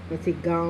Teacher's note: हवा जो है नाक और मुंह दोनों से निकलती है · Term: अनुनासिक